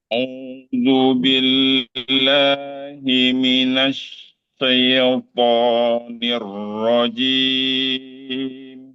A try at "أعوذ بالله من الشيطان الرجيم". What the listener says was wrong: Oke, sebelum ya, syai, Ustaz buka dulu, jelaskan dulu A-nya. Sya, buka. A dari sya harus terbuka. Tadi Ustaz gimana? Ustaz belum bunyi A sempurna sudah ke ya. Syai, jadinya syai.